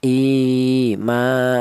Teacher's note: Panjang ya, yaitu satu alif atau dua harakat atau dua ketukan ya. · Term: mad thabiii